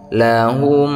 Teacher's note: mim sukun bertemu dengan huruf lam maka dia disebut izhar syafawi bacanya jelas tidak ada dengung